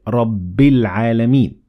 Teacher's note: we connected the ba directly to lam